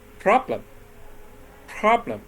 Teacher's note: pronounce louder and stronger I say problem problem okay I put the stress on the first syllable · When I pronounce it, the first syllable is pronounced louder and stronger. I say problem.